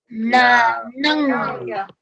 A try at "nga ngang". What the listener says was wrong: It's not na, it's nga, ngang. Okay? Remember, look how I say it, okay? I'm not moving my jaw, okay? I'm just going like this. Nga, ngang. Okay, it's on the back. Nga, ngang.